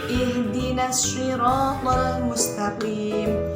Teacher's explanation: Karena bacaan syamsiyah atau idgham syamsiyah. Lam diidghamkan kepada huruf yang ada di depannya, yakni shad. Ihdinas syiratal mustaqim, bukan ihdinal syiratal mustaqim.